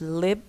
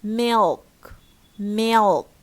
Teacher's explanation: at the beginning we have clear la, we have lip, and in here we have dark or velarized la after vowel